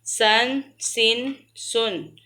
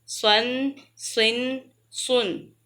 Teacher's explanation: سین کو پتلا پڑھنا ہے، سواد کو موٹا پڑھنا ہے، کہ اسی طرح پہچان ہوگی سن سن سن، سن سن سن۔